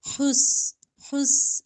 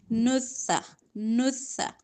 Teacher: لیکن سین میں سٹی ہوتی ہے، سا میں سٹی نہیں ہوتی